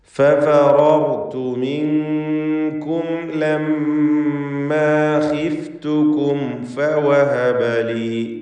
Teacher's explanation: ഇവിടെയൊക്കെയുള്ള സാക്കിനത്തെ മീമിനെ ഇൽഹാർ ഷഫവി നൽകി മണിക്കാതെ വെളിവാക്കണം.